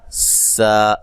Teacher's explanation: سین کو باریک سیٹی سے